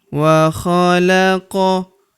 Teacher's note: Huruf qof berharakat sukun kita pantulkan atau kita qalqalahkan